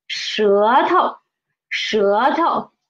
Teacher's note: Actually, 头 is a second tone, but when it is a suffix, it is a neutral tone.